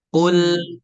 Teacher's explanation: Q ini dibaca tebal qu dan domah maka kita monyongkan bibir kita bertemu dengan lam yang sukun maka bibir yang monyong kembali semula Ya kembali ke posisi semula jadi jangan dimonyongin lagi ya jangan